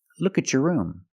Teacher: When you have a T before a Y in two separate words, and you link the pronunciation of the two words, you will hear the ch sound.